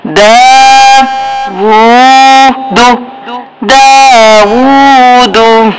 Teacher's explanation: الٹا پیش ہے ایک الف کے برابر لمبا، کھڑی زبر ہے تو ایک الف کے برابر لمبا، اور دال کو جلدی سے، پیش کو جلدی سے ادا کرنا ہے